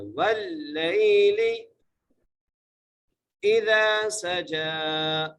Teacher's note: واللیل اذا سجا، حمزہ کی جزیر ہے، زال زبر دا، زال کو ایک الف کی مقدار کھینچ کے پڑھنا ہے۔ اذا سجا، سین کو سیٹی سے، جیم کے اوپر کھڑی زبر ہے، جیم کو ایک الف کی مقدار کھینچ کے پڑھیں گے۔